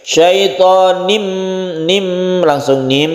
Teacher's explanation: Syaitanim marid ini disebut idgham bi gunna nun mati bertemu dengan mim. Idgham artinya masuk, tanwin ini masuk ke mim sehingga suara n atau tanwinnya ini menjadi mim. Syaitanim, nim langsung nim kemudian kita dengungkan.